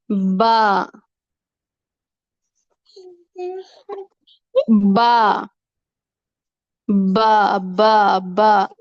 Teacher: با جب ہونٹوں کا تری والا حصہ آپس میں ملتا ہے، با با با با با آپس میں ہونٹوں کا جو گیلا حصہ ہوتا ہے وہ جب آپس میں ملتا ہے تو وہاں سے با ادا ہوتا ہے۔ ہونٹوں کو بند کر کے با نہیں ادا کرنا، با ہونٹوں کی تری سے ادا ہوتا ہے اور اس کو بحری کہتے ہیں۔